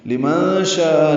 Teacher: نون ساکن کے بعد شین آنے کی وجہ سے اخفا ہے